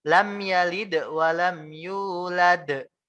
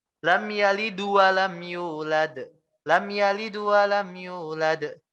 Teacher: Dia bukannya mengqalqalah huruf dalnya, dia malah membuat seolah-olah dalnya itu harokatnya dhammah.